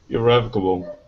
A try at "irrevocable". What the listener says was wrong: Okay, instead of bow at the end, bull. Give me a good L. Irrevocable.